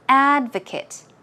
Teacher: In the noun form, the stress goes on the first syllable, so it is advocate.